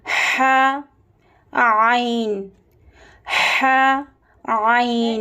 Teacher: درمیانی حلق یعنی مڈل تھروٹ، یہاں سے ح اور عین ادا ہوتا ہے، ح عین، ح عین۔